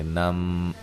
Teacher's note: یہاں نون تنوین کا ادغام مع الغنہ ہوگا